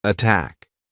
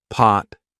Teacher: pot versus attack right aspirated attack not aspirated pot